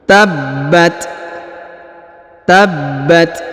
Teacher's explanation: perhatikan di sini kita baca lebih jelas lagi tabbat tabbat perhatikan huruf ba ditahan dan ditekan karena terdapat tanda tasdid ya maka kita baca tabbat kemudian huruf ta diberikan hembusan tipis